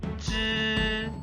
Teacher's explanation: This special counter is pronounced 知 with first tone, a high-pitched flat tone